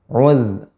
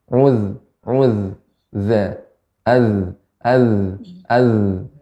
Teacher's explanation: Zal ini sifat makhrajnya ya, sifatnya adalah rakhawah. Udh, mengalir.